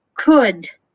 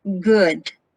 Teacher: ka is voiceless whereas ga is voiced